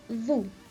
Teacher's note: notice how we don't pronounce the S at the end of a word in fact we only pronounce the S at the end of